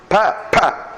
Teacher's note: When you say pa, there must be a gush of air. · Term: Mahaprana